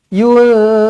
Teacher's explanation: Nun kosong bertemu dengan Zai ikhfa Hakiki dengungkan dua harakat